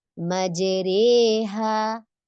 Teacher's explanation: हम जो कैफियत पढ़ रहे हैं जबर और जेर के दरमियान की पढ़ रहे हैं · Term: इमाला